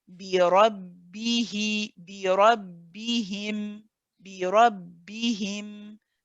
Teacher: We also have to hear the e in the he before we join it with the meme. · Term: kasra